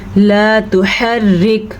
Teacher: را باریک پڑ جائے گی کیونکہ را کے نیچے زیر ہے